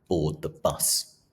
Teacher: the plosive alliteration of ‘board the bus’ adds to the punchy, forceful nature of this experience